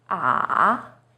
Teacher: third tone sension is even lower it first steps down then rises